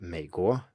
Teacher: For example, in a word like 美 国, the United States, we have 美, third tone, 国, second tone, and the 美 here is just low, there is no dip, and it certainly isn't rising